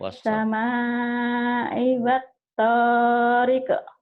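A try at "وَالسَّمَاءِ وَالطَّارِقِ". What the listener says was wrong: Riq, jangan rike, riq. Riq, qalahku bro ya.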